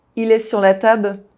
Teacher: Have you noticed that the word following il begins with a vowel? So the L sound is not dropped. We make a consonant link instead.